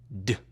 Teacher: The sound d is voiced. You use your voice to say d. You can feel the vibration here. D. The ed ending is pronounced as voiced d when the verb ends with a voice sound other than d.